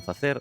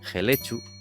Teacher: en el dialecto oriental la F inicial aspírase